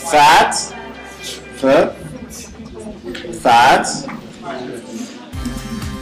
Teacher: Another one, voiceless labiodental fricative